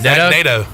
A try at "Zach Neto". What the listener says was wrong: Neto? You're saying NATO. It's Neto. It's either Neto or Neto. I think it's Neto.